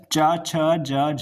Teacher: तालु की बात करें यानी तालव्य से जो च वर्ग है उसका उच्चारण होता है।